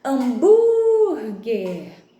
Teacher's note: Bur é a sílaba tônica. Mas percebam que é uma palavrinha paroxítona, porque a penúltima sílaba é tônica, mas termina em R, então essa sílaba recebe o acento.